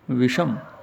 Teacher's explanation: तो दंत्य से को मूर्धन्य से हो जाता है। जैसे वी जमा में सम, तो वी से पहले स्वर आ गया है जो कि ए आ के अतिरिक्त कोई अन्य स्वर है, ई है, यहाँ पर दंत्य से को मूर्धन्य से हो जाएगा विषम।